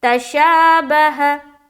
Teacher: शा को हम खींच रहे हैं, क्यों, क्योंकि खड़ा जबर बराबर होता है किसके, अलिफ मद्दा के। खड़ा जबर को, अलिफ मद्दा को हम जितना खींचते हैं उतना हम खड़ा जबर को भी खींचेंगे।